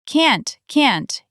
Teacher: In American English, can and can't can sound very similar because the final T is often a glottal stop. That means we cut off the air in our throat instead of making a clean T sound.